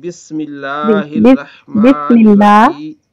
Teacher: سین پر سیٹی تھوڑی سی نکلے گی.